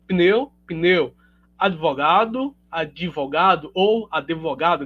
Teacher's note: a gente altera e insere um izinho ali